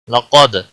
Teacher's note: قاف کو موٹا پڑھیں گے، حروف مستعلیہ میں سے ہے، دال ساکن پر قلقلہ ہوگا